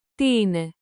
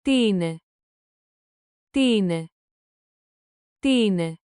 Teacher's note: Make the question rise at the end. Beat, ta ta ti a. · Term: rising tone